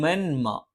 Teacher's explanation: തൻവീനിനു ശേഷം മ വന്നു സുക്കൂനുള്ള നൂനിനു ശേഷവും തൻവീനിന ശേഷവും മ വന്നാൽ നൂനിനെയും തൻവീനിനെയും ശേഷമുള്ള മ എന്നുള്ള മീം എന്നുള്ള അക്ഷരത്തിലേക്ക് ചേർത്ത് മണിച്ചുകൊണ്ട് ഉച്ചരിക്കണം